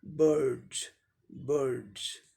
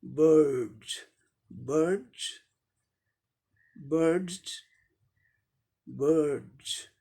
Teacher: अमेरिकन में आर silent नहीं होता है, इसीलिए ब, बी का ब आ गया, आई का अ लॉन्ग आ गया, या आर का रॉ साउंड आ गया, डी का डॉ आ गया, और डॉ वॉइस्ड है, इसीलिए यस का sound जॉ, बर्ड्स, बर्ड्स, बर्ड्स, बर्ड्स। · अब देखें इसका उच्चारण क्या हो जाएगा, देखें यहाँ बी का ब, आई का अ, लॉन्ग अ, थोड़ा लॉन्ग अ साउंड होता है, अ नहीं अ। आर साइलेंट होता है ब्रिटिश इंग्लिश प्रोनाउंसिएशन में। डी का डॉ, बर्ड, यस है, या डॉ साउंड वॉइस्ड है, इसीलिए यस का उच्चारण जॉ हो जाएगा, बर्ड्स, बर्ड्स, ये ब्रिटिश इंग्लिश प्रोनाउंसिएशन हो गया। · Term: अमेरिकन प्रोनाउंसिएशन